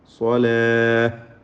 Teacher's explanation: സ്വലാത്ത എന്ന തായിൽ വഖഫ് ചെയ്യുമ്പോൾ സാക്കിനായ ഹ ആക്കി നിർത്തുക